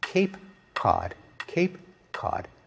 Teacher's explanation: we don't notice that we pronounce k in two different ways depending on whether it comes before an A or an ah